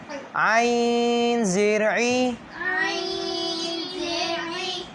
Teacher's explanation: عین کو کہاں سے ادا کریں گے؟ حلق کے درمیانی والے حصے سے۔ حلق سے، یہاں سے۔